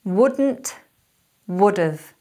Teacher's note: Notice how the emphasis is on would and how the 'nt and the 've sort of just trail off, they're not very strong.